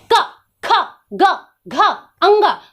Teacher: कंठ के प्रयोग से हम बोलते हैं